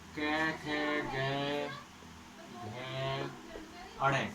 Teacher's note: कंठ से बोला जाएगा। कै वर्ण जो होगा वो पूरा कंठ से बोला जाएगा।